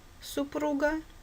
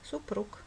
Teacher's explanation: буквы г звонкий г супруга или глухой к супруг